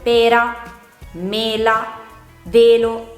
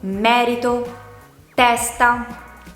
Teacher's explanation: nel primo caso pronunciamo la E chiudendo di più la bocca, nel secondo caso pronunciamo la E aprendo di più la nostra bocca